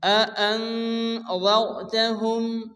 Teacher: গুণনা হবে আআনযারতাহুম রা সেকেন্ডের ডান দিকে জবর অথবা পেশ আসলে রাকে পুর অর্থাৎ মোটা করে উচ্চ করে পড়তে হয়